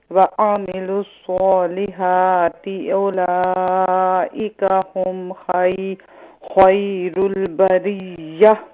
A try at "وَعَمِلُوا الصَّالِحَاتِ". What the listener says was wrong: کوشش کریں کہ وَعَمِلُوا میں جو حرکت زبر ہے اسے کلیئر کریں، باقی ماشاءاللہ آپ کا بہتر ہے.